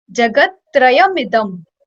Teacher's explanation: When we'll combinedly like pronounce it, instead of Idam, it would be Midam.